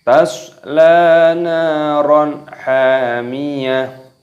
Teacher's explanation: ketika waqaf, ketika berhenti, taknya dimatikan, diganti dengan huruf H.